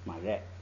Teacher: 后边这个瑞升降调变成降调，直接读4声